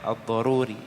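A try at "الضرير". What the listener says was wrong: Ad-Daruri. Ad-Darir bukan Daruri, Ad-Darir. Abu Muawiyah Ad-Darir, buta matanya, kecil ya. Abu Muawiyah Ad-Darir terkenal dengan Abu Muawiyah Ad-Darir.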